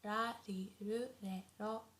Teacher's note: the R sound is not as harsh as in English, so it's not like r, not like R, but it's very soft in between L and R